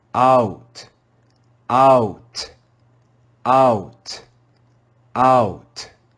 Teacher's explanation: you can hear how the two vowel sounds join together